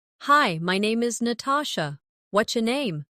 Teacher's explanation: Notice how what's your can sound like whatcha in casual speech.